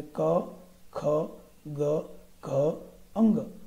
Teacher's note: ક વર્ગ બોલીએ એટલે ક, ખ, ગ, ઘ, અંગ એ બધા કંઠમાંથી બોલાય છે